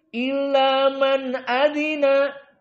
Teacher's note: Di sini man dalam keadaan nun sakinah setelahnya hamzah jelas idhar.